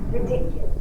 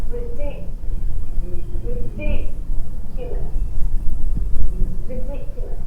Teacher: The second syllable is the stressed syllable.